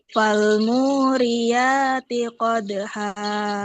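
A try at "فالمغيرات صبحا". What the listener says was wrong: Qadha, ha dihaluskan ha-nya. Dia letaknya di tengah. Falmuriyati qadha. Hati-hati ha. Nanti sifatnya yang salah.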